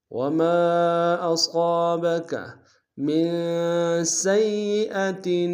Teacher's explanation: من میں نون ساکن ہے، یہاں پہ غنہ کریں گے، ایک الف نار میں کھینچیں گے۔